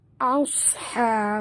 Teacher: huruf sad tebal dan naikkan lidah ke atas. Jangan tebalkan alif.